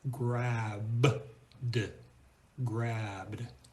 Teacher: Notice the E is completely silent. It doesn't sound like an E, it doesn't sound like a schwa, it's just b-d, grabbed. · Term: voiced sound is d